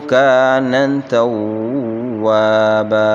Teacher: کان الف مدہ ہے اور اس کو ایک الف کی مقدار کھینچیں گے